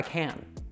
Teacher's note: you would use this fully pronounced kæn when you want to give emphasis